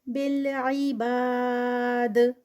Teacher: بالعباد، یہاں پر اینڈ پر دال کا قلقلہ اور الف مد اسٹاپ پر ہے 4 کاؤنٹس کا اسٹریچ